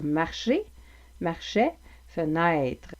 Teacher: Donc, si vous êtes un Français avec un accent européen et que ce que vous voulez faire, c'est sonner plus comme un Québécois, je vous invite à pratiquer la distinction entre le son « et », le son « est » et avec le diphtongue « est » comme dans « fenêtre »